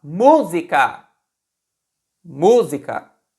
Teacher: Se a gente fala música, música, a sílaba tônica é mu. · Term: proparoxítonas